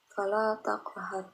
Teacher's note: Qaf merupakan salah satu huruf qalqalah karena dia berada di tengah kalimat, berarti termasuk ke dalam qalqalah sughra, dipantulkan secara dengan pelan.